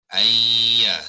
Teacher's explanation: Bila tidak ada tanda sukun tu bermaknanya makhraj dengan sifatnya sudah tidak dinyatakan lagi, ya, sebab dia dah masuk ke dalam ya ni, kita menyebut ya saja, tidak sebut nun. Jadi bila kita membaca, kita jangan bunyikan nun, ya. Kita bunyikan ya, menyebut bunyi ya, ya. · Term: idgham ma'al ghunnah